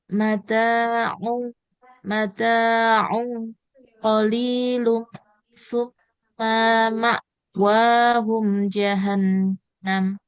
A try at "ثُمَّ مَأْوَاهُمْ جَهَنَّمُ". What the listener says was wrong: Tumma di sini mimnya nggak boleh panjang Ibu. Fathah tidak ada. Tumma ma'wahum jahannam.